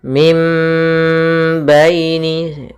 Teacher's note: Apabila ada nun mati bertemu dengan ba maka kita baca dengan bacaan iqlab yaitu suara nunnya diganti dengan suara mim dan kita tahan gunahnya · Di sini ada nun mati bertemu dengan ba. Maka suara nunnya kita balikkan menjadi suara huruf mim. Maka yang kita dengarkan adalah mim, bukan lagi min karena dia bertemu dengan ba.